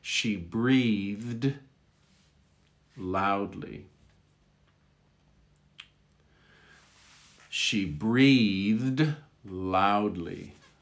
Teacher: push a lot of air through between the th and the d